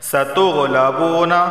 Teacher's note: واو سے پہلے پیش ہے، اسے بھی 1 الف کے برابر کھینچ کر پڑھا جائے گا